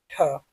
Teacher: मूर्धन्य महाप्राण अघोष व्यंजन वर्ण